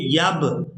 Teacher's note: یہاں پر با کو ادا کرتے ہوئے آواز میں جو حرکت پیدا ہو رہی ہے اسی کو ہی قلقلہ کہا جاتا ہے